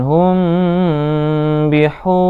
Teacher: Mim sukun bertemu dengan huruf ba, harus ditahan. Hum bihu, hu panjang, hu-nya. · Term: ikhfa safawi